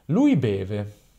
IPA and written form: ˈlui ˈbeve (lui beve)